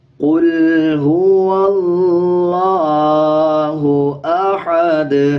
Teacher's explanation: ہا کی آواز کو باریک رکھنا ہے، یہ باریک ہا ہے · اس لام سے جو پہلے والا الف ہے اس کو سکپ کر دیں گے اور اس لام کو سکپ کر دیں گے، یہ لام بھی سکپ ہو جائے گا اور یہ الف بھی واو کو ڈائریکٹ دوسرے لام کے ساتھ ملا کے پڑھا جائے گا